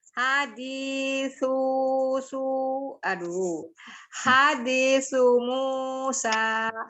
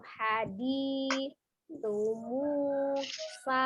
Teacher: Di yang panjang ya, karena ada ya sukun sebelumnya kasroh. Sementara su tidak panjang, dia harus dibaca pendek, hanya saja dia terpisah hurufnya dengan mim kan, tapi itu bukan dianggap sebagai spasi, maka tadi ngayun sunya maka panjang ya kalau diayun.